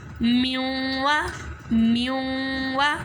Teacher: अब नून साकिन को हम वाव के साथ मिला देंगे क्योंकि वाव के ऊपर तशदीद है और जिसके ऊपर तशदीद होती है उसे तो एक मरतबा उससे जो पहला वर्ड होता है उसके साथ मिलाकर पढ़ते हैं और दूसरी मरतबा उसी वर्ड की हरकत के मुताबिक ज़रा रुक कर पढ़ते हैं।